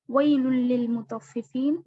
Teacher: हुरूफ यरमलून में से इदगाम है, इदगाम यरमलून, तो ये जो लाम है बिला गुन्ना होगा।